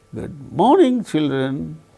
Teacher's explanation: we can notice the falling tone occurring on the word morning